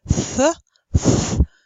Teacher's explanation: You stick the tongue out between your teeth, and therefore such sounds are called dental sounds.